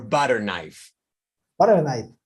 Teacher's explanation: With the butter emphasized or stressed because it's a type. You can see this is a type of knife.